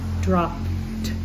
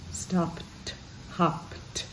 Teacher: drop ends in a P, and the ED sounds like t